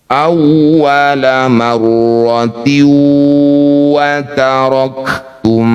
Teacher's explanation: Bunyi kasr tanwin masukkan pada huruf wau. Bibir mencucu dengungkan dua harakat. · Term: idgham bighunah, idgham bi gunnah